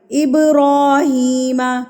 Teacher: اب ہلا کے پڑھیں گے، مار کے لفظ کو پڑھیں گے تھرتھراہٹ سے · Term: قلقلہ